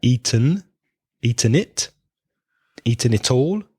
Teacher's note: the N and the vowel sound comes together